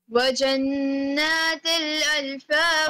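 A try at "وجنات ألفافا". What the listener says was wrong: Thin. No pressing of thin. No pressing of thin.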